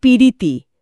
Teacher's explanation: আর শুধু অই নয়, অন্য স্বরধ্বনিও আসতে পারে। যেমন ধরুন প্রীতি, প প্লাস র, এটা হয়ে যায় পিরিতি, মাঝে একটা ই এলো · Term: মধ্যস্বরাগম